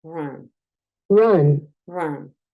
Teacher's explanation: Es un sonido schwa, es un sonido distinto. Nosotros al inicio del programa decíamos que la U es entre una O y una A.